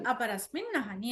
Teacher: next దాంట్లో అహిని అకారం వచ్చింది అందువల్ల ఇక్కడ కూడా సంధి జరిగి దీని నకారం అనేది రెండు సార్లు వస్తుంది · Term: డబల్ న